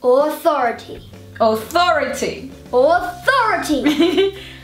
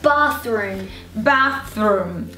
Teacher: Eu faço esse sorriso do T, mas o F não pode ser ele, porque esse, o TH, eu coloco a língua entre os dentes e sai um ar, um sopro